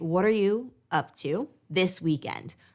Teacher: notice how my voice is a little bit stronger and i'm slower on the weekend